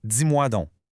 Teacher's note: Le D va donc s'affriquer, il va se transformer en « dis ».